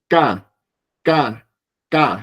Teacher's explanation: La K sería esta K, K, K. No tiene aire.